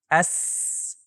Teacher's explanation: लेकिन वह किसी ऐसी चीज को नहीं छू रही जो हवा को बहने से रोक दे। हवा को सिर्फ एक रास्ते के जरिए गुजारा जाता है जो जारी रहने वाली एस की आवाज पैदा करता है।